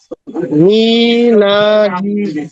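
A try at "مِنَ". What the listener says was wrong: হ্যাঁ, উচ্চারণ ঠিক আছে, এবার দ্রুত পড়েন,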